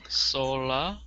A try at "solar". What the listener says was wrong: E-R. Solar. No. E-R. Listen, guys, a lot of our words end with A-R, but we pronounce it E-R. Like, we don't say scholar, we say scholar. We don't say solar, we say solar,